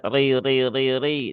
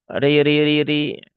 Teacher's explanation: Huruf ro yang berbaris fat eh fathah berbaris kasrah. Huruf ra yang berharakat kasrah maka dia dibaca dengan tarqiq ya atau dengan tipis · pangkalnya enggak usah naik kemudian punggung lidah yang sebelah dalam juga tidak perlu disentuhkan ke langit-langit cukup punggung lidah yang bagian depan saja